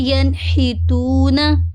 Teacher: اب یہ دیکھیں، ہا جو ہے یہ بھی حروف حلقی میں سے ہے، ٹھیک ہے؟ ہا حروف حلقی میں سے ہے، تو یہاں پہ بھی ہم نون کی آواز کو کیا کریں گے؟ ظاہر کریں گے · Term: اظہار